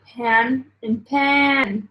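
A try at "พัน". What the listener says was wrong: Well, you just changed the tone as well. You said pan. No, you said You said pan and pan. That would be two different words.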